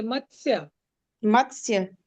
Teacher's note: मत्स्य म के बाद आधा त है आधा स है। दोनों को आप आधा ही बोलेंगे। पूरा नहीं बोलेंगे।